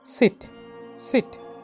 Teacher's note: അൽവിയോള, ഫ്രിക്കേറ്റീവ്, voiceless. അൽവിയോള, tip of the tongue and teeth റിച്ച്.